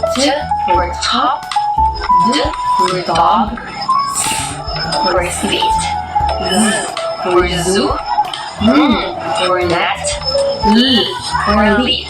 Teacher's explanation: For the fourth one, we have alveolar, produced with the tongue against the ridge just behind the upper teeth.